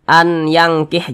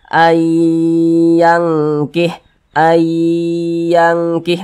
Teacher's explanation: Nah karena dia digunahkan atau didengungkan jadi suaranya itu kita tahan kita panjangkan sejenak